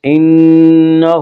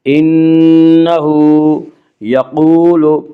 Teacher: انہ، ہا کے اوپر الٹا پیش ہے، الٹا پیش قائم مقام ہے، وا مدہ کے، اس لیے الٹا پیش کو 1 الف کے برابر کھینچ کر پڑھیں گے